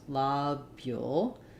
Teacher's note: So it's as I mentioned, first syllable stress, lobule, and it can be oo or ul.